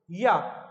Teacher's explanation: या का उच्चारण कहां से होता है? तालु से।